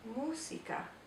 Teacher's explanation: And because this is a cognate, we always want to pronounce the S like the Z sound, like in music, but we can't do that in Spanish, so it's música. We have to say the S sound without making that Z sound.